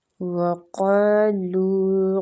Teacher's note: قاف مستعلیہ حروف ہے، پر پڑھنا ہے، اور الف مد ہے تو کھینچیں گے۔ لو وہ مد کے ساتھ ہے، لو کو بھی کھینچیں گے۔